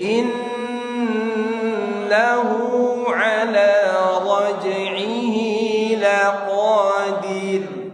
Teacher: Innahu tahan nun syiddah.